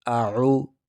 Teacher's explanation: حمزہ کو سختی سے، عین کو نرمی سے، جیسے اعو، حمزہ کی آواز ہے، عو عین کی آواز ہے۔